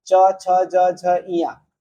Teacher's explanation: च वर्ग कंठ, फिर तालव है, मतलब तालु से इसका उच्चारण करते हैं